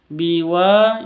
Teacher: dibaca panjang dua harakat karena ada Alif diawali dengan fathah